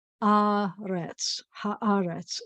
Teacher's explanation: the accent's always going to be on the ah for this word